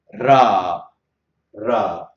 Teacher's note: make the underside of the tip of the tongue touch the palate of the mouth